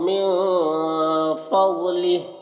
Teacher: من کے نون میں اخفا ہوگا، نون کی آواز کو ناک میں چھپا کر ایک الف کی مقدار کھینچ کر پڑھیں گے۔ فضلہ، ضاد کو پر پڑھنا ہے۔